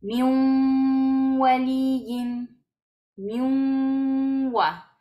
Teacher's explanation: Entonces vamos a hacer una fusión completa, ignorando la nun y pronunciando la wow como si tuviera shadda